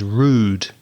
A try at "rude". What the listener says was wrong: So yours is shorter, your vowel sounds shorter than the south of England.